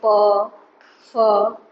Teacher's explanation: प, फ, इन सबों का उच्चारण ओष्ठ से होता है